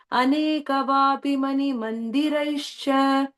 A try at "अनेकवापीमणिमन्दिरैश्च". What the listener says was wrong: In the second line, ஒரே ஒரு இது, இந்த வாபி வந்து long e, okay? So aneka vapi manimandiraischcha. Second line, the vapi is a long e, okay? Aneka vapi, you have to stretch it.